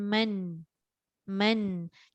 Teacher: Walaupun kita tak baca dengan 2 harakat, dia tak panjang tapi dia jelas. Jelas dia tetap ada gunnah tu.